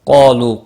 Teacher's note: قالوا، قاف اور الف دونوں پور پڑے جائیں گے۔ قاف مستعلیہ ہے، پور پڑا جائے گا۔ الف عارضی پور ہے، ایک ہی کلمے میں آئے ہیں اس لیے پور پڑا جائے گا۔